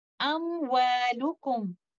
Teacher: Letter meme carries the characteristic of gunna, while waw does not have it. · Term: idhar